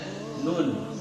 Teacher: Nun, ujung lidah ketemu dengan gusi, ya. Bukan langit-langit, bukan juga gigi, apalagi keluar, nggak boleh, ya.